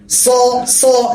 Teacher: তারপর আসে আবার 3 আলিফ টান, সদ, মোটা হবে, স, স। জিহ্বার আগা সামনের নিচের পেটে, দাঁতের পেটে লাগবে, সদ, সদ। নিচের ঠোঁট বিছানো থাকবে।